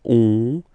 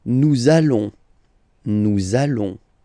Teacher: when you get this ON combination, you get this nasal on, really in your nose, okay? On.